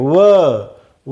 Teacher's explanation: व म्हणताना जीभ दातांना लागते आणि ओठांची चुंबळ होते, म्हणून व हे एकमेव वर्ण असा आहे की ते दंतौष्ठ्य आहे.